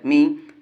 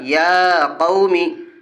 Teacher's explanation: زیر ہے، زیر کو جلدی پڑھے، تھوڑا بھی نہ کھینچے۔